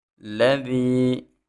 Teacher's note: ذال میں سیٹی پیدا نہیں کرنی۔ جب بھی ذال کو ادا کرنا ہے تو اپنی زبان کی نوک جو سامنے اوپر دانت ہے نا بڑے، ان کی نوک کے ساتھ لگائیں گے تو اس کے اندر سیٹی پیدا نہیں ہوگی۔